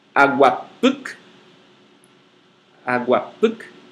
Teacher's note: A sílaba tônica no puc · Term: oxítonas